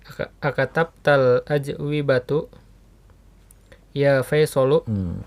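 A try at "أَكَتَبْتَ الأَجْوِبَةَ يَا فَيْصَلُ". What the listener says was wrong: Ajwibatu. Kira-kira benar gak ajwibatu? Dengan domah tu.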